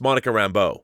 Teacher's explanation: rambo with an emphasis on the second syllable since it's a french thing